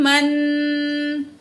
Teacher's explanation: नून की आवाज़ को नाक में छुपा कर पढ़ेंगे